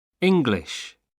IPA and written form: ˈɪŋglɪʃ (English)